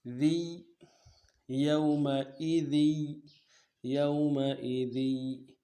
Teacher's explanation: تنوین کو نہیں ادا کریں گے کیونکہ آگے تشدید کے ساتھ ملا رہے ہیں، یا کے ساتھ ملا رہے ہیں، لہذا ذی پڑھیں گے، زی نہیں پڑھیں گے، ذی، یومئذی، یومئذی۔